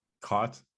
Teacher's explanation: typical of a Western dialect speaker, where they have lost that vowel distinction that some other dialects had